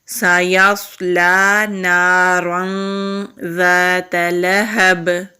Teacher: یہاں پر ہم اخفا کریں گے، یعنی کہ نون کی آواز کو چھپائیں گے۔